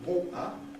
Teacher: But this T becomes glottal, giving the London pronunciation